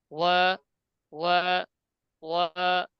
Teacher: ঠোঁট একটু গোল থাকবে, তবে একটু পাশের দিকে যাবে যেহেতু পাতলা হরফ। ওয়া, ওয়া, ঠোঁট গোল করে, ওয়া একেবারে ওয়া মুখ পাশ হবে না কিন্তু, ঠোঁট গোল থাকবে একটু পাশের দিকে যাবে।